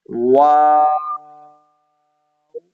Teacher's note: ये मदे लाजिम है। वा शुरू में भी होठ गोल होंगे। और जब आप इसको खत्म करने जाएंगे आखिर में भी आपने होठों को गोल करना है।